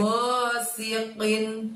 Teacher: Qinnya kita bacanya atau keluarkan hurufnya dari pangkal lidah kita, gosiqin, sambil menyentuh langit-langit lidahnya, gosiqin.